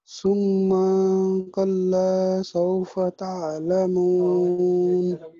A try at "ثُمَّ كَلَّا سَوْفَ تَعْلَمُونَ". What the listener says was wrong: ثم کو لمبا نہیں کھینچنا، ثم كلا سوف تعلمون،